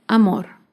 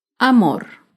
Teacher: amor se acentúa en la última sílaba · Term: palabra aguda